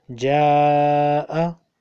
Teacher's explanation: In Ja'a, there is a Madda on Alif. You will have to elongate it four times.